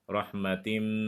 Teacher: tanwinnya harus dimasukkan ke dalam bunyi huruf mim dan wajib dengung. Dan hukum bacaan ini disebut dengan idgham bi gunnah.